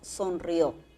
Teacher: le ponemos la mayor fuerza de voz ya no a la I, sino a la O.